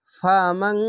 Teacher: তো এখানে দেখেন ফা আছে, এই যে দেখেন ফা, নুন সাকিনের পাশে, এই যে দেখুন নুন সাকিনের পাশে ফা, তার জন্য ইকফা গুন্না হবে বাংলা অনেস্কার মতো।